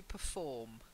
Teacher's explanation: The stress is on the form, not perform.